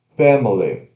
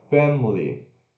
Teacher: Ó, com schwa, family. Sem schwa, family.